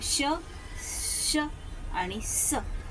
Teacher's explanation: श आणि स यामध्ये जीभ काय होते आपल्या टाळूला घासल्या जाते तेव्हाच घर्षण होतं म्हणून याला घर्षण व्यंजन म्हणतात